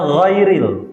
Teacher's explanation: Ghin ini dibaca tidak keras, tidak dibaca goiril, enggak. Tapi dibaca ghairil.